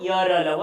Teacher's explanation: अंदर ही अंदर इनका उच्चारण हो जाता है, कहीं पर स्पर्श नहीं होता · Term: अंतस्थ